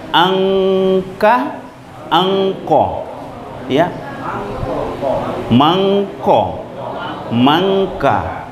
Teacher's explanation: Jadi nunnya itu langsung masuk ke huruf K. Jadi terdengar kayak ing, padahal bukan. · nunnya dibaca samar, didengungkan 2 harakah di awal huruf di belakangnya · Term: samar berdengung